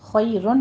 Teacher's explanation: فَهُوَ خَيْرٌ لَكُمْ، خی میں خوا کو پر پڑھتے ہوئے آگے یا لین ادا کیجیے، اور را کو مفخم پڑھتے ہوئے تنوین کا قاعدہ ہم نے ادا کرنا ہے، ادغام بلا غنہ